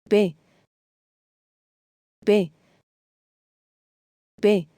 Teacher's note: This letter sounds close to the English P, but with less breath.